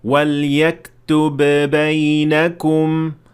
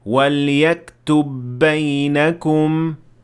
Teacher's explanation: the ba at the end of yaktub will be fused with the ba at the beginning of the word بَيْنَكُمْ